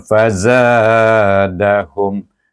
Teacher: kemudian fazadahum zai, safir bunyinya. Fazadahum, hum dibaca dengan za, dibaca dengan mat asli, hum dibaca dengan izhar syafawi.